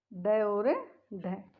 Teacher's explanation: यानी जिन ध्वनियों का उच्चारण हम करते हैं तो जीभ की जो नोक है वो उलटकर कठोर तालु को झटके के साथ स्पर्श करती है। जीभ की नोक पीछे उलटती है और जो कठोर तालु है उसको स्पर्श करती है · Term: उत्क्षिप्त व्यंजन